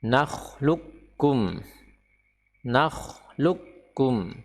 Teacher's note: huruf qaf ya tidak perlu dimunculkan sama sekali karena dia diidghamkan atau dileburkan, dimasukkan ke dalam huruf kaf secara sempurna